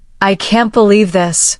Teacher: If you say, I can't believe this, with a downward tone, it may show disappointment.